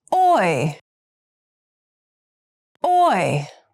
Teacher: the sound that requires the lips moving from a rounded to an unrounded position